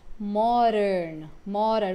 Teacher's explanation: Americanos falam mais modern, modern, como se fosse um R que a gente tem aqui no português